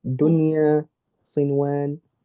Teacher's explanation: So you do the noon sound, but you don't make the ghunna. That's your idhar. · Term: idhar mutlaq